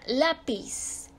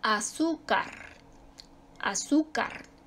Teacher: su sílaba tónica está enseguidita es decir va en la penúltima sílaba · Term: graves o llanas